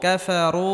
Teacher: জবর কাফ ফা জবর ফা কাফা রা ওয়াও পেশ রু কাফারু পেশের বাম পাশে জুমালা ওয়াও মাদের হরফ 1 আলিফ পরিমাণ লম্বা করে টেনে পড়তে হবে।